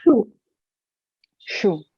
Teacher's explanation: when you say shoe in English, your tongue doesn't touch the hard palate